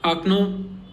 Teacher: in this word only the last O is stressed, so it sounds like akno.